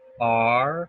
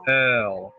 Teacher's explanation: we're putting our tongue back for R and putting it forward for L